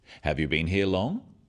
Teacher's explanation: questions that start with have you are yes no questions so they have a rising tone